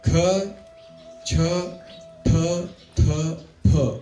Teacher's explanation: ये अनवॉइस्ड but aspirated है, इसमें हम लोग ह डाल रहे हैं।